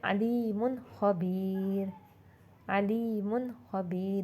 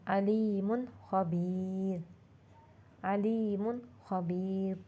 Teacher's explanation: दो पेश की तनवीन के बाद ख्वा आया तो हमने दो पेश वाले हर्फ को ज़ाहिर करके पढ़ा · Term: इजहार